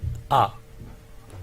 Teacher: आ का उच्चारण करिए, आपका मुंह पूरा खुलेगा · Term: विवृत